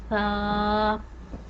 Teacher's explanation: जब हमारी ज़ुबान की नोक ऊपर वाले दो दांतों की नोक से लगेगी तो सा अदा होगा। सा को भी हम एक अलिफ के बराबर लंबा करते हैं, सा।